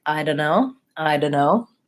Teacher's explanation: the T is left out entirely